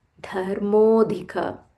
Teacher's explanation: Dharmodhika, dha mahaprana here, dhi also mahaprana here.